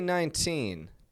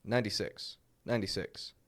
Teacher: I reduce that T, make it a flap T, and just let it flow out